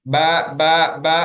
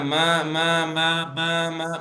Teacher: மூக்கு அடைச்சாலும் பாருங்க, ப சொல்லும்போது எந்த டிஃபரன்ஸும் இல்ல. ப, ப, ப, ஆனா ம, ம, ம, ம, ம, மூக்கு அடைச்சா டிஃபரன்ஸ் வருது, டிஸ்டர்ப் வருது.